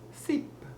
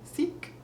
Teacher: When it comes to a short I in a word, like with the word sip, it almost becomes an E kind of sound.